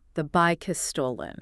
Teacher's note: the final K sound of bike is reassigned. It becomes the onset of the syllable